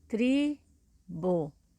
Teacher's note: é o tri é a penúltima sílaba é a sílaba mais forte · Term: sílaba tônica